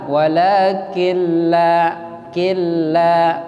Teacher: Idgham bila gunna. Artinya nunnya lebur ke huruf lam. Jadi nunnya nggak dibaca.